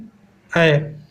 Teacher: ए का उच्चारण स्थान कंठ तालु है